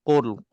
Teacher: secara otomatiknya dia akan muncung mulut dan muncung mulut itu akan membantu tebalkan huruf q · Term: Kaf tebal